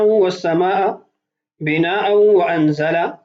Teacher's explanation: ان دونوں کے اندر تنوین ہے، ما بعد واو ہے اور واو حروف یرملون میں سے ہے، غنہ بھی ہوگا ادغام بھی ہوگا